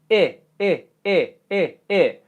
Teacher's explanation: when I do it the tongue is actually touching the back of the teeth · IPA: /ɪ/